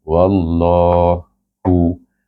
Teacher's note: dengan bacaan tebal lam jalalah itu tebal dua harakat